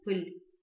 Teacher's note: звук «и» читается у нас очень мягко, его как будто бы не слышно